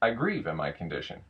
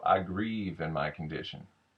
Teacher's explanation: With Ebonics, what I'm finding is there's a much lower rise and then a much longer slope down. So it's got a little bit more of a hum to it.